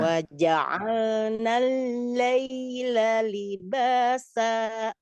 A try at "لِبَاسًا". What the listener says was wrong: libasa. Agak turun saanya, Bu. Nah, yang itu. Coba libasanya 3 kali, Bu.